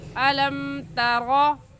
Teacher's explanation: साकिन पर गुन्ना नहीं करेंगे क्योंकि मीम साकिन के बाद ना बा है और ना ही मीम है। जल्दी से पढ़ लेंगे अलम तरा, ता को बारीक पढ़ेंगे।